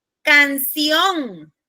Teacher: Fíjense que termina en N. La entonación está en la ON y termina en N.